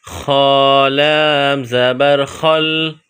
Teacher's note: خ، گلے سے بلغم نکالنے کی طرح اس خ کو پڑھیں گے، اس کے بعد لام ہے، لام پر جزم ہے، خ اور لام کو آپس میں ملائیں گے، خ لام زبر خل۔